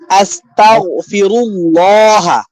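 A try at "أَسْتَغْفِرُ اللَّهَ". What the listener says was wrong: আস্তাগফিরুল্লাহ, আস্তাগফিরুল্লাহ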